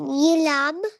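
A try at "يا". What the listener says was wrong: लाम नहीं, ये 2 डॉट्स देखें, नीचे किसके होते हैं, अभी बताया था मैंने। ये क्या है, टू डॉट्स वाला?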